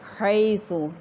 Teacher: یا ساکن ہا کے اوپر زبر یا لین نرمی سے ادا کیا جائے گا